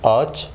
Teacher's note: soft G is not pronounced or becomes less audible, and it lengthens the pronunciation of the vowel